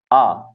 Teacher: ह्रस्व अ और दीर्घ आ ये दो वर्ण हो गए कंठ से